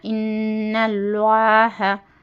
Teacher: گنہ کے ساتھ پڑھنا، ان اس طریقے سے، اور اللہ کے، اللہ لفظ اللہ سے پہلے زبر ہے اس لیے اللہ کی لام کو موٹی پڑھنا